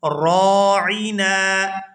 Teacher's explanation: یہاں را کو پورا ادا کرتے ہوئے الف مدہ کی وجہ سے کھینچ کر ادا کریں گے۔